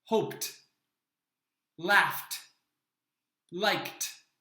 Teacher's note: The next ending is a simple t sound. There is no extra syllable associated with this sound. We use the t sound for words that end with the sounds p, f, s, sh, ch, or k.